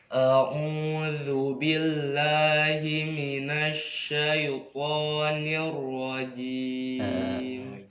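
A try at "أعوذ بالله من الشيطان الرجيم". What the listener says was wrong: Ya huruf jim itu jangan ada desisnya, jangan rojim, jangan. Kita aja kayak jajan coba. Ih jiji. Nah gitu normal aja kita ngobrol. A'udzu billahi minasyaitonir rajim.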